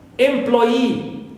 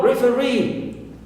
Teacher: Also for e, like employee. So here it ends with double e, long vowel e. That's why third syllable here is stressed. And also referee, double e at the end, long e.